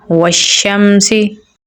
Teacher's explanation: शीन को again मीम के साथ मिलाएंगे क्योंकि मीम के ऊपर जज़म है। मीम में सिफ़्त तवस्सुत पाई जाती है तो थोड़ा सांस जारी रखकर पढ़ेंगे · वाव को शीन के साथ मिलाएंगे क्योंकि शीन के ऊपर तशदीद है